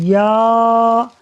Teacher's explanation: یہ جو یا ہے یہ زبان اور تالو کے درمیان سے ادا ہوگا